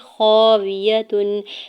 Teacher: دو پیش کی تنوین پر اظہار حلقی ہو رہا ہے کیونکہ یہاں پہ آگے عین حرف حلقے میں سے ہے